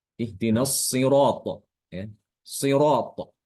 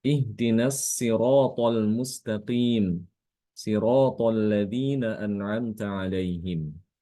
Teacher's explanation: Imam Kumbul membaca shotnya pada kata as-sirat dengan huruf sin, diganti dengan huruf sin.